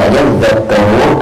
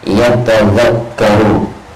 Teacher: mengidghamkan ta dalam lafaz aslinya ke huruf zal, karena yadzakkaru aslinya adalah dari yatadzakkaru, aslinya lafaznya itu adalah yatadzakkaru, begitu. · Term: idghamut ta